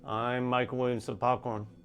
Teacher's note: The function, the conversational topic, the motive, is revealed by the highest tone. In this case, the highest tone falls on I'm.